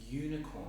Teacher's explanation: the sound is more like a Y sound, like a consonant sound.